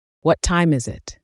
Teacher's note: Do you hear the falling tone?